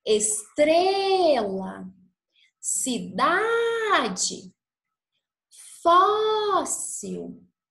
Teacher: Nesse caso, então, nós temos a penúltima sílaba tônica. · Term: paroxítonas